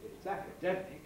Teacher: If I wanted to say something like it's academic, I could do that. I could have a head on acca and a high fall nucleus on demic, or I could use some other combination, but it'll always be some head on the acca bit and some nucleus on the dem bit.